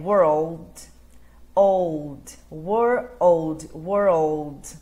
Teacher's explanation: O L no inglês, a sua língua vai lá atrás dos dentes superiores, no cantinho do céu da boca.